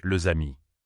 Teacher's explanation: Dans les amis, le S final de les, qui ne se prononce pas d'habitude, devient un son Z. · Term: liaison